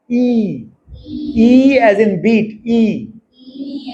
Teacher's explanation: close vowel मतलब mouth की position क्या है ऑलमोस्ट क्लोज बहुत कम जगह है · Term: क्लोज वाउल